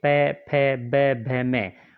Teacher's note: होष्टे में दोनों होठों से प, फ, ब, भ, म